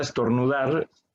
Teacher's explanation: la palabra estornudar la sílaba que más suena es dar